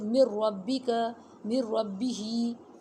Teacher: نون اور را کا مخرج قریب قریب ہے، اور پورے کا پورا یہ مرج ہو جائے گا، را میں نون کی وائس بالکل نہیں رہے گا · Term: ادغام متقاربین